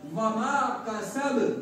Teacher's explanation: और हमने ये भी पढ़ा था कि जब इन हुरूफ पर जज़्म हो तो इनके मखरज टक्कर खाना। तो बा का मखरज क्या है? दोनों होंठों की तली वाला हिस्सा। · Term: कलकला